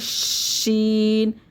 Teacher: زبان کی نوک نہیں لگے گی، بلکہ زبان کا درمیانی حصہ جو ہے درمیان میں رہے گا اور زبان کی جو کروٹیں ہیں وہ اوپر والے حصے سے